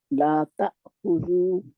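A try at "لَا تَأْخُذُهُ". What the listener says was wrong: जू जाल के आगे वाव जज़म वाली नहीं लगानी।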